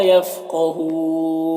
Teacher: اور مل میں ادغام تام ہو رہا ہے، بغیر غنہ کے پڑھیں گے، لام الف مدہ ہے، ایک الف کے برابر کھینچیں گے. یفقہون قاف حروف مستعلیہ میں سے پر پڑھیں گے، اور یہاں پر وقف کی صورت میں مد عارض وقفی ہو رہا، تو اس طرح سے پڑھیں گے.